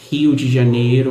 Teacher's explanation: Outra característica também interessante é que muitas pessoas dizem que o nosso R ele é um R mais arranhado, ele é um R mais na garganta. Dizem que tem uma influência francesa por trás disso, então a gente fala Rio de Janeiro com um R mais arranhando na garganta. · a gente fala Rio de Janeiro com R mais e arranhando na garganta